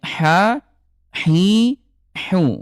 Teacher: keluarnya di tengah tenggorokan kosong suaranya ya